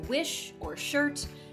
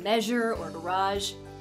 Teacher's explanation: each pair is made the exact same way just that one is voiceless and one is voiced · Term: post-alveolar fricatives